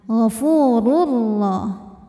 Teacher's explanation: idgam Bil gunah karena ada tanwin dammah menghadapi huruf ro maka tanwin masuk ke ro gofurur tidak disertai dengungan Jadi cukup ditekan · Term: idgham bila gunnah